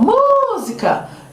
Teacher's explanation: E aí vai evidenciar o mu, por exemplo, como a mais forte.